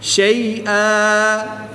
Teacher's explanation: 2 زبر کی تنوین کو وقف میں الف مدہ سے تبدیل کر دیں گے